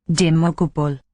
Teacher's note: With that epenthesis between the B and the L in the last word.